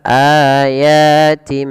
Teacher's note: Awalnya ayatin, karena bertemu dengan ba, bunyi nun digantikan dengan mim · Maka di sini kita membalikkan bunyi suara nun kepada huruf mim. Awalnya ayatin, karena ada bertemu dengan ba diganti dengan mim suara nunnya. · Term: iqlab, iklab